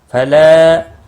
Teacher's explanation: ہدایَ، فلا، لا الف مدہ ہے، ایک الف کے برابر کھینچ کر پڑھیں گے